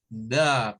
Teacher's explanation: La lengua hacia afuera, da. Una pequeña vibración y luego el schwa.